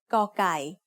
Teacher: The sound of ก อ ไ ก ่ as the initial consonant of a syllable is g. It is very similar to a hard G or an unaspirated K.